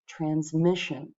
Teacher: It's the middle syllable that gets the stress.